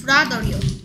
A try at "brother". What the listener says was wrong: 브라. 더. th가 있어서 혀를 살짝 무는 the 소리가 나는데 왜 th를 안 하고 t를 하나?